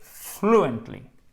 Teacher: Accent tonique sur la première syllabe.